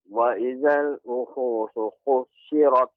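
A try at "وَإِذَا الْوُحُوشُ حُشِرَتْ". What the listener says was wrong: Nah, shin tidak ada bertasydid, Pak. Jadi dibaca dengan lembut tanpa ada tasydid, bukan husyirat, akan tapi husyirat wa idzal wuhusyu husyirat.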